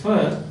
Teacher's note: Oral, voiceless, VL, labiodental, fricative.